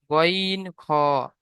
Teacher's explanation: 3 নম্বর মাখরাজ, হলকের বা কণ্ঠনালীর শেষ ভাগ হতে উচ্চারিত হয় গইন খ